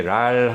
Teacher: 리을 같은 경우는 이 입이 울립니다. 입안이 울립니다.